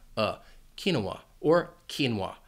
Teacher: Now, you might hear it pronounced with 3 syllables, quinoa, in which case the stress would be on that second syllable, quinoa, and that final syllable would just be that schwa